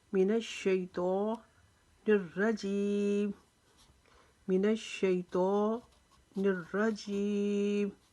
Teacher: منشیطان الرجیم، منشیطان الرجیم، الرجیم کی را کو ہم موٹا کریں گے کیونکہ یہ را جو اس کے اوپر زبر ہے، یہ را موٹی پڑھی جائیں گی، اور جیم کو ہم لمبا کھینچ کر پڑھیں گے۔